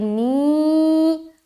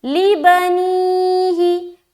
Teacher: لام زبر لا, اذ قال لبنیہ, لام زیر لی, با زبر با, لی با, نون یا زیر نی, ہا زیر ہی, لبنیہ. نی میں کیوں اتنا کھینچ رہے؟ کیونکہ یا ساکن ہے اور اس سے پہلے زیر ہے یعنی کہ یا مدہ ہو گیا